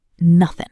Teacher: Also, look at the word nothing. In fast speech, we often drop the final G sound, so it sounds like nothing.